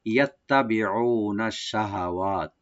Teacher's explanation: তাটাকে double করে open করে পড়বো, টান হবে না